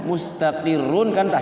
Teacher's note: ro itu ketika waqaf di ro itu dia harus ditahan